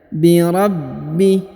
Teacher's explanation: Huruf ba berharokat tasdid, maka ditahan dan ditekan ya.